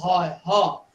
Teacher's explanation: ਜਿਹੜਾ ਸਾਡੇ ਗਲੇ ਦਾ ਅੰਦਰ ਸਿਸਟਮ ਹੈ, ਲੈਰਿੰਗਸ ਹੈ, ਉਹਦੇ ਅੰਦਰੋਂ ਸਿੱਧੀ ਧੁਨੀ ਬਾਹਰ ਨਿਕਲਦੀ ਹੈ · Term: ਸੁਰਤੰਤਰ ਵਾਲੀ ਧੁਨੀ